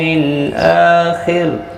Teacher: مل آخر، حمزہ کے اوپر کھڑی زبر ہے، ایک الف کی مقدار کے برابر کھینچ کر پڑھنا ہے، لام ساکن کو ہلانا نہیں۔ خا حروف مستعلیہ ہے، پر پڑھنا ہے اور را وقف کی صورت میں باریک پڑھا جائے گا کیونکہ خا کے نیچے زیر ہے۔ را ساکن سے پہلے جب زیر آتی ہے تو باریک پڑھا جاتا ہے، تو ملانے کی صورت میں بھی باریک پڑھا جائے گا کیونکہ اس کے نیچے زیر ہے اصلی۔